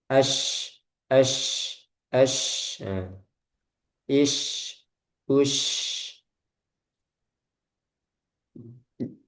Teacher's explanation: Jadi udaranya menyebar. Menyebar di mana? Di makhrajnya shin, di sekitar makhraj. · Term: tafasyi